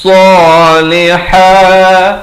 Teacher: ha di pertengahan kerongkong